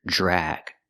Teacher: The DR makes the j sound plus the R